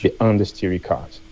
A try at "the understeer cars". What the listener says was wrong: I would say make sure you get the R in over and under, and then in steering, Instead of steery, want to hear ing. So not steery, but steering. Just like ring. like a ring, an L, ring, steering, steering, steering, steering, oversteering, understeering.